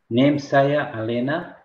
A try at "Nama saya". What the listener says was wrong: Nama, not name. Nama.